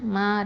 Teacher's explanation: மீம் ஃபத்ஹா அலிஃப் மத்து, மா 2 ஹரக்கத்தை நீட்டணும்